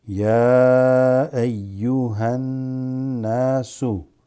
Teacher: this alif lam drops, goes straight into the noon. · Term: huruf shamsiya